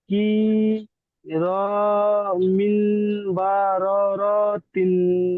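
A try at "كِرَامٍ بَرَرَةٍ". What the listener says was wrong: আচ্ছা, এখানে মিন হয়ে যাচ্ছে মিম, কি র মিম বররতিন। এখানে মিন হয়ে যাচ্ছে, মিন হয়ে যাচ্ছে, মিন হবে না। মিম মিম দুজের, দুজের সরি এক জের মিম, মিম জের মিম।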